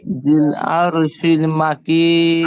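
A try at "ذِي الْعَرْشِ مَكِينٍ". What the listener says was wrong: আরশিল না ভাই, আরশি, আরশি মাকিন।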